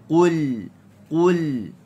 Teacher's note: Huruf qaf bersifat dengan isti'la, pangkal lidah terangkat. Baris depan kena muncung. Dia adalah huruf yang tebal. Okey, maka kita kena baca dengan tebal lah, dan dia juga adalah huruf yang tidak ada angin.